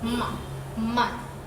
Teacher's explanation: For examples, ma, as in man, both lips come together to block the airflow in the mouth, while the sound resonates through the nose. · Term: nasal